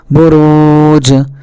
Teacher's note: نون قاف زبر نق، عین دو زبر عن، نقعا، با پیش بو، را واو پیش رو، برو، جیم ساکن بروج، یہاں بھی دیکھیے جیم ساکن ہے، لہٰذا یہاں بھی آواز ٹکرا کر الگ ہو جائے گی۔